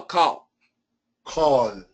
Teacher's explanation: don't do a dark L you do a light l